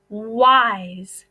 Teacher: If you listen to the word wise, the S is making the Z sound because it has a vowel in front of it and the E is at the end.